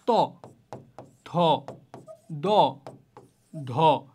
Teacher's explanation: যেমন ধরো ত, থ, দ, ধ, এগুলো উচ্চারণের ক্ষেত্রে তোমার জিহ্বার যে সামনের অংশ রয়েছে সেই সামনের অংশ কিন্তু দাঁতে অবশ্যই লাগতে হবে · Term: দন্ত